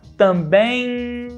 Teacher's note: no final das palavras, a gente usa vogais nasalizadas em português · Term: vogal nasalizada